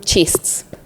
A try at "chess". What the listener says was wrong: Chess. Chess, no T.